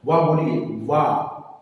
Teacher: तो इसका उत्तर है ऊपर के दांत और नीचे का होंठ। ऊपर के दांत प्लस नीचे का ओष्ठ, इनके स्पर्श से वाह का उच्चारण होता है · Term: दंतौष्ठ